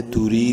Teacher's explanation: را کو باریک لیکن ایک الف کے برابر لمبا